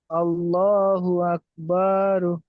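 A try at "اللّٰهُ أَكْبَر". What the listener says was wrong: আবার বা টান হয়ে যাচ্ছে।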